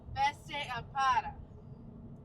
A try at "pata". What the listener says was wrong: Pata. No, there's no R. It's a T. Pata.